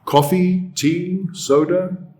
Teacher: The intonation rises at the end.